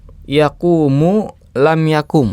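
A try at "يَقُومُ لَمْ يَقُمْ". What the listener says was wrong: iya, yakumu lam yakum. Ya, pendek, wawunya hilang.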